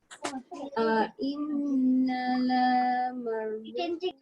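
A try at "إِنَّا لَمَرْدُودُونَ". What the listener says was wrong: Okay, nah dia panjangkan sikit. Panjangkan pasal dia ada alif.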